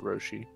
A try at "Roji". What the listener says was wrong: Yeah, Roji. I don't see no SH.